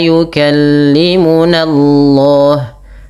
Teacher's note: Lafal Allah tebalkan karena di dalam tafhim yang di mana sebelum lafal Allah itu ada fathah.